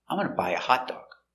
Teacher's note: so you stress buy and hot dog